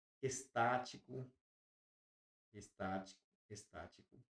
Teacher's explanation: Tudo isso é proparoxítono. Possui a antepenúltima sílaba tônica.